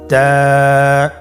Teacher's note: তায়ের মাখরাজ কোন জায়গা থেকে? জিহ্বার আগা সামনের উপরের 2 দাঁতের গোড়ার সঙ্গে লাগিয়ে উচ্চারিত হয়।